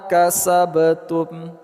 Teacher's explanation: Kasabtum. Huruf ba sukun pada tengah kata, qolqolah sughra. Pantulnya cuma sedikit saja.